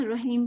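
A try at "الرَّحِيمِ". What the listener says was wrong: دیکھیں آپ کا را ہی کے اندر مجھے ہا فیل ہو رہا ہے،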